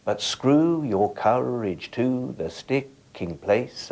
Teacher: one stressed syllable follows an unstressed one, as in words like courage and sticking? These lines contain 10 syllables, 5 unstressed, 5 stressed. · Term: iambic pentameter